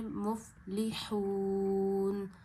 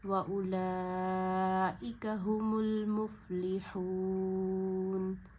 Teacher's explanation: صرف نون کی آواز آئے گی، نون پہ زبر نہیں پڑی جائے گی. یہاں 3 فنگر جتنا کھینچنا ہے، واو مدہ ہے کیونکہ وقف آنے کی وجہ سے اس میں مد عارض پیدا ہو گئی ہے.